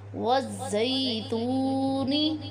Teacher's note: واو حرف مدہ ہے کیونکہ اس سے پہلے والے حرف تا کے اوپر پیش ہے، اسے ایک الف کی مقدار لمبا کر کے پڑھیں گے۔